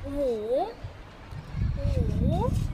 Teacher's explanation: It has a third tone, a V-shaped like tone.